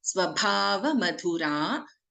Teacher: Bha and Dha are Mahaprana aksharas.